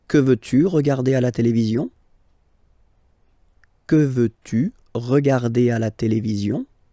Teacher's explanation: you can hear that I've been raising a little bit my voice at the end